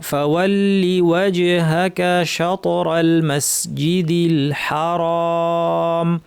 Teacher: ফাওয়াল্লিতে কিন্তু টান নাই, এজন্য লিওয়া পরের অক্ষরটা আগেই আমাকে দেখে পড়ে ফেলতে হবে যেন এখানে টান চলে না আসে। কেউ যদি বলে ফাওয়াল্লিওয়া তাহলে ভুল হবে।